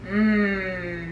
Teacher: our voice needs to be on for this sound so we should feel some buzzing in our throat and then our lips um I'm gonna say this sound three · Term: M sound